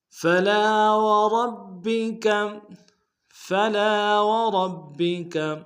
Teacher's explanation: وربک میں را کو موٹا ادا کریں گے · فلا میں لام کے ساتھ الف مدہ ہے، ایک الف دال میں کھینچیں گے